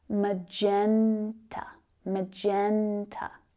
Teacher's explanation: So we've got three syllables there. Can you hear where the strongest stress is? Magenta, magenta. It's on that second syllable.